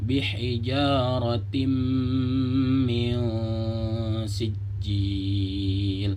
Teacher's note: disamarkan karena nun sukun bertemu sin, hukumnya adalah ikhfa